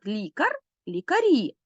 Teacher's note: наголос прийшов на закінчення